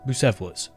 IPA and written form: bjuːˈsɛfələs (Bucephalus)